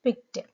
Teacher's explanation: though the ending is ed, the pronunciation will be t, t sound